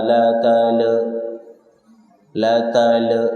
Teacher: lam sukun dibaca idhar, jangan membal.